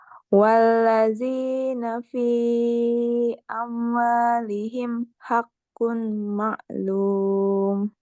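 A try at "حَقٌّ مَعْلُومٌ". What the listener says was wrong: Hakum maklum. Hakum pakai M.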